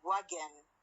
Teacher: the N here is not a syllabic one. It is pronounced as a schwa N.